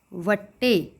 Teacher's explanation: ਏ ਦੀ sound ਹ ਐ ਦੀ sound ਨਹੀਂ